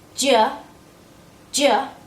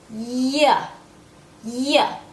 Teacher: My tongue is getting close to the top of my mouth, but it does not touch. If it touches, we come out with a J. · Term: Y sound